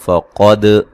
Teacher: قاف کو موٹا ادا کریں گے، دال کو ہلا کے پڑھیں گے